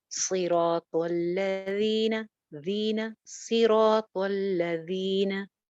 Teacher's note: Soft letter है, नरम हर्फ है, बगैर सीटी के, ऊपर वाले 2 दांतों के किनारे पे जुबान लगा के, सिरातुल्लज़ीना, ज़ीना, सिरातुल्लज़ीना, न क्या है, ज़ी क्या है और न क्या है, ज़ी या मद्दा, एक अलिफ लंबा, न सिर्फ जबर।